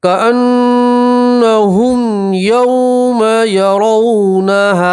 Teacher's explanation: वाव लीन को खींचते नहीं है, वाव लीन को जल्दी से पढ़ते हैं।